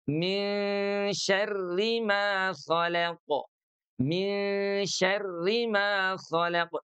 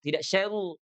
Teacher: Ketika ditasdidkan dia tebal kemudian ketika dikasrahkan dia jadi tipis.